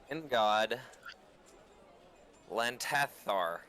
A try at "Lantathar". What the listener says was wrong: Yeah, but you didn't pronounce the second th.